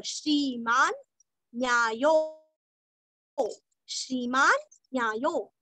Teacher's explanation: श्री दीर्घ और माँ के आगे आधा न